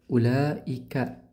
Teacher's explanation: Alif sebelumnya fathah dibaca panjang dua harakat mad thabi'i tapi setelahnya hamzah dan dalam satu kata ulaika maka dihukumi mad wajib muttasil panjangnya empat atau lima harakat